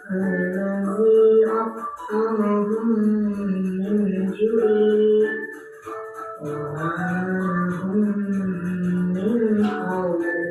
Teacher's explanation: memasukkan huruf mim ke dalam huruf mim disertai dengan suara guna sekitar 2 ketukan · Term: isgam misli